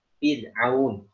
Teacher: ro tarkik atau tipis ketika sebelumnya kasroh atau ro berharokat kasroh, misalnya fid'aun, ya, seperti itu contohnya.